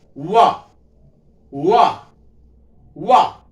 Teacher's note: जब वाह का उच्चारण करते हैं तो दोनों ओंठ आपस में मिलते नहीं है। जैसे मैं बोल रहा हूं वाह वाह वाह, तो क्या हो रहा है, इसमें सिर्फ और सिर्फ ओठ नहीं मिल रहे हैं, ओष्ठ हो गया।